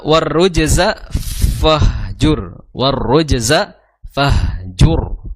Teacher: huruf ro itu memiliki memiliki sifat takrir yaitu bergetar lidahnya atau bergetar ujung lidahnya · di situ ada tasdid di huruf ro maka ee di tahan dulu ya sedikit ditahan kemudian ditekan sedikit ya dan jangan sampai juga menghilangkan daripada sifat takdir bergetarnya bergetarnya